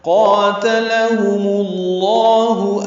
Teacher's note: قاتلہم اللہ انا یؤفکون قاف پر ہے، تا باریک ہے، لام باریک ہے. میم کو لام اسم جلالہ سے ملائیں گے تو لام اسم جلالہ میم کی پیش کی وجہ سے پر پڑھیں گے